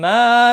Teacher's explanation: ما الف مدہ ہے، ایک الف کے برابر کھینچ کر پڑھیں گے